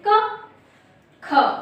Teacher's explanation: जब आप का साउंड लेते हैं तो हवा कम निकलती है, और जब ख बोलते हैं तो हवा एकदम से ज्यादा निकलती है